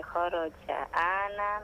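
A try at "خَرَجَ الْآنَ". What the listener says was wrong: Kharajal ana. Kharajal. Kharajal ana. A itu panjang. Asalnya al-ana. Ketika disambung dengan kharaja, kharajal ana.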